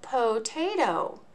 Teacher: each syllable ends in a vowel and it makes the long o and the long a sound in the word potato